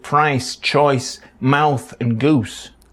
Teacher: are quite extreme diff thongs in Manchester by that I mean the tongue travels quite a way between the beginning and end of price Choice mouth and Goose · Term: extreme diphthongs